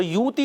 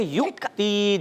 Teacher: اب یہ واو نہیں پڑھنی ہم نے, اس حمزہ کو پڑھنا ہے, اور اس حمزہ کے اوپر جزم بھی ہے. تو یوتی نہیں پڑھیں گے, ہم پڑھیں گے یؤتی, جھٹکا دیں گے. ٹھیک ہے, مگر ایسا جھٹکا نہ ہو کہ سکتہ ہو جائے, یعنی تھوڑی دیر رک کر اور پھر آگے گئے.